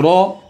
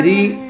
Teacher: जबर है रो मोटा हुआ ना जेर हो तो री कहो रा पर जबर हो तो मोटा पढ़ना है जैसे रो कहो जेर हो तो बारीक पढ़ना है